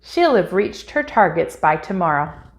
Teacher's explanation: we can contract the word will with the subject by dropping the wi and combining the double l sound with the previous word